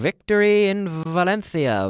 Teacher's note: it's a good V it's a voiced F